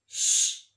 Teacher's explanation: Our sound for today is a voiceless consonant sound. Now it's voiceless because when we'll make the sound, you won't feel any vibration of your throat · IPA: /ʃ/